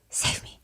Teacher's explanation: immediately mouths something before talking and it sounds like a very breathy low save me. You can barely hear him. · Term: breathiness